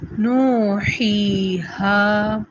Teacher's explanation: آیاتی، پھر نوحیہا، یہ نو میں جو الٹا پیش تھا وہ اب واو کی صورت میں خود ساتھ میں آ گیا ہے. نو 2 حرکت، ہی 2 حرکت، ہا 2 حرکت